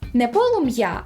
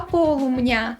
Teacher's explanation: коли звуки м та ї зустрічаються поруч між ними зазвичай з'являється нь щоб полегшити вимову